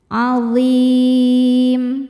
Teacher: alif lam menghadapi huruf qamariyah yaitu ain, maka lam diidharkan atau dibaca jelas. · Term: alif lam qamariyah